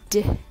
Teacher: Instead, they say d, like the weak d sound or the flap t sound.